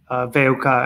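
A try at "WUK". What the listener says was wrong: Yeah, kind of. It's actually, we're just pronouncing it VUK, so all in one.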